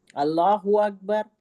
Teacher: अल्लाह हु्मा लफ्ज अल्लाह को मोटा पढ़ेंगे। अल्लाहू अकबर लफ्ज अल्लाह को हम मोटा पढ़ेंगे।